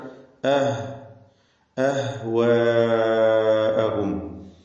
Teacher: റഹാവത്ത് നൽകി ഉച്ചരിക്കേണ്ട ലോലമായി ലൂസാക്കി ഉച്ചരിക്കേണ്ട അക്ഷരമാണ് · ഹ വ്യക്തമാക്കുക അഹ്വാ എന്നായി പോകരുത് ഹ സാക്കിനത്താണ് അഹ് അഹ് ഇതാണ് ഹിന്റെ ഉച്ചാരണം റഹാവത്ത് നൽകി ഉച്ചരിക്കേണ്ട ലോലമായി ലൂസാക്കി ഉച്ചരിക്കേണ്ട